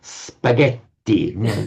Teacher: It was a doubled consonant. They really hold it long.